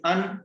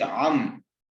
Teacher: Hamza comes from mouth and ain comes from throat.